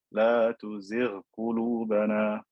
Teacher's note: Ghayn is from the throat and then qaf is slightly above it.